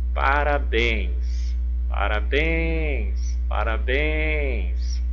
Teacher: E observe que a última sílaba é o bens, a mais forte. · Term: sílaba tônica